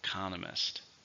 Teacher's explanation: 4 syllables, stresses on the second syllable.